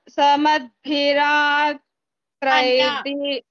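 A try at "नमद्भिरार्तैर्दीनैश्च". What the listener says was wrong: Na. It is not sa. Na.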